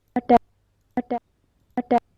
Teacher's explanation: So, I seeing this waveform I cannot say whether it is a ta, whether it is a ta, whether it is a ka, but I can say yes, it is a unvoiced, unaspirated, plosive.